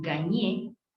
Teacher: un verbo como gagner, ganar, la R final no se pronuncia.